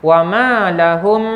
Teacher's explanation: mim gabung dengan mim, ya, idgham kembar, idgham mutamasilain